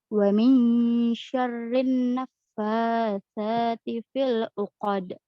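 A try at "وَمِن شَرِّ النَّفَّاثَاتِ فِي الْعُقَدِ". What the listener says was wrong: Cuman coba sedikit agak ditahan lagi ketika membaca nun bertasydidnya. Wa min syarrin naffasa. Mungkin sama seperti Ibu Weni tadi ya, ketika membaca ikhfanya, kedengarannya benar-benar gitu ya. Wa min syarri, wa min syarri. Tapi yang tepat itu harus mempersiapkan ke makhraj huruf shin. Wa min syarri, wa min syarri. Bukan wa min syarri. Kedengaran nggak bedanya?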